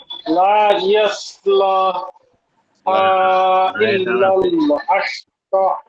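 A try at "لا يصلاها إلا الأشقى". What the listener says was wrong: লামে একটু টান কম হয়ে গেছে। আবার লা ইয়াস লা, এখানে একটু টান রাখতে হবে।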